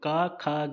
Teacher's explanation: का, खा, गा तीनों का ही उच्चारण स्थान कंठ है